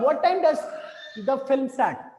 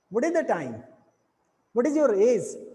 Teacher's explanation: हम यहाँ पे तो थोड़ा सा अप रहते हैं लेकिन लास्ट में जाते जाते हमारा जो टोन है वो डाउन की तरफ फॉलिंग यानी गिरने लगता है। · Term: falling tone